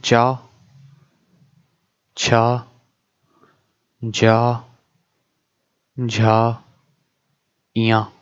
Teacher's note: जो चा वर्ग के अक्षर हैं वो तालु से बोले जाते हैं